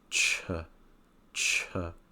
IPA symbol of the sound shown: tʃ